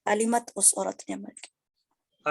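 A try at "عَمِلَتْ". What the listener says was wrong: अलिमत नहीं, आमिलत, मीम पहले, इसमें हाँ बिल्कुल, इसमें थोड़ी सी कंफ्यूजन होती है, मिलते जुलते अल्फाज हैं, लेकिन थोड़ा सा आप गौर से प्रैक्टिस करेंगे तो इंशाल्लाह हो जाएगा।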